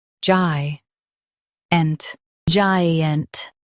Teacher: Stress gi and keep unt light.